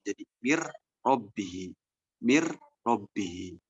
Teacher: Ada kata min dan robbihi. Kemudian setelah itu diidgomkan, nun sukun ini masuk ke dalam ro, sehingga yang tanpak dari nun ini menjadi ro.